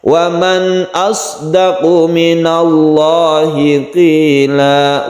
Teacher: Lafaz Allahnya ini lafdul jalalah yang tafkhim karena sebelumnya ada fathah, maka lamnya disebut lam yang tafkhim atau kita tebalkan.